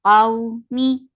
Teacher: This waw is lean, so you will make it soft when you're attaching fatha with waw. Qawmi for kasra give E sound.